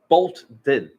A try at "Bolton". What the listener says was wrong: You said bolt and then ten.